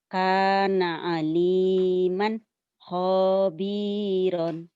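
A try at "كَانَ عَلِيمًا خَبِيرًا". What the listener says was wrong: ho-nya pendek kana aliman khabiran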